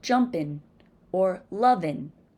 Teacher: Niño, mañana. In African American English, the ng sound is often replaced with just the n.